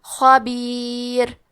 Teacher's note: تو یہاں راء کا حکم ہے ترقیق، لہذا ہمیں حرف الراء کو پتلی آواز میں پڑھنا ہے